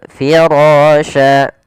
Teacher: pada lafal firasya dibaca tebal rnya karena dia ro yang berharakat fathah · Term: ro tafkhim